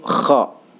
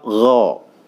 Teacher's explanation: Huruf kha itu dia punya sifat huruf hams ya. Hams itu dia keluar desis atau udara dari mulut kita. Kalau dia gha itu punya sifatnya jahar ya.